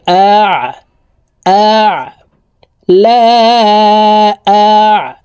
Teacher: আইন হরফকে হলকের মধ্যখান থেকে চাপ দিয়ে উচ্চারণ করতে হবে, কারণ আইনের মখরাজ হলকের মধ্যখান থেকে হবে।